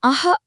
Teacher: நாம அஹ அப்படின்னு சொல்லும்போது கடைசியா ஒரு மூச்சொலி வலியாகும் இல்லையா அதுதான் விசர்க்கம்.